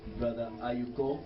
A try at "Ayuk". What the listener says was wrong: Yes, Ayuk, not Ayuko.